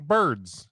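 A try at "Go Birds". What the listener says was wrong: Now say it together. Nope, you're not saying G.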